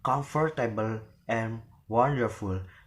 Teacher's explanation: So it means that the affixes able and full, there will not be given any stress, but the stress is in the first syllable or in the stem